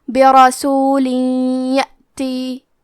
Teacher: تو ہم یہ تنوین کو یا میں ملا کے غنہ اور تشدید کے ساتھ یہ حکم کو ادا کریں گے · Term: ادغام بغنہ